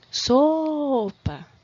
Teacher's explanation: Tá vendo que eu incompridei um pouquinho a sílaba so? Então, é essa daí a tônica, essa é a sílaba forte da palavra. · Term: sílaba tônica